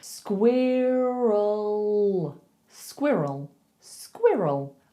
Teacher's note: So just make sure you're practicing that R, the bowl, R, R, R, because we say squirrel, squirrel, squirrel. And then it's a dark L at the end. Push the tongue up to the top of your mouth.